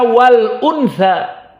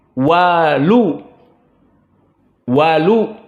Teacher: Dihilangkan hamzahnya. Namun harokat pada hamzah dipindahkan ke lam. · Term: an-naql